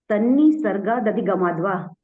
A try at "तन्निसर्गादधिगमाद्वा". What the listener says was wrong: हाँ, उसको वो जब आप बोलते हैं ना तो जल्दी जल्दी में बीच के कुछ शब्द रह जाते हैं।